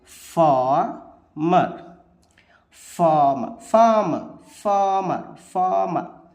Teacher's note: Stressed unstressed trochaic meter